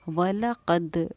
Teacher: یہاں وَلَقَدْ کی دال پر بھی میری ایک آواز جو ہے وہ لوٹ رہی ہے، وَلَقَدْ، اس آواز کے لوٹنے کو ہم قلقلہ کہتے ہیں، اور حروف دا ساکن بھی حروف قلقلہ میں سے ہے، یہاں جیم ساکن حروف قلقلہ اور یہاں پر دا ساکن حروف قلقلہ۔